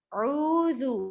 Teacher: اقصی حلق سے ادا ہوتا ہے حمزہ